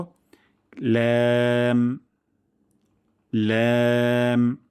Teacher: তারপর ল্যাম, এটিও পাতলা সাউন্ডে, লাম হবে না, ল্যাম পাতলা সাউন্ডে জিহ্বার আগা, কিনারা এবং উপরের দাঁতের মাড়ির সঙ্গে লাগিয়ে আমরা উচ্চারণ করব